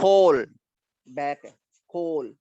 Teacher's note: जैसे मैं कहता हूँ खोल, बैक है, खोल यानी खा की साउंड ला के दरम्यान में ओ की साउंड है, तो दिस इज बैक वॉल, क्योंकि बैक part of the tongue move कर रही है.